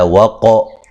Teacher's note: قاف کو موٹا ادا کریں گے، قلقلہ کریں گے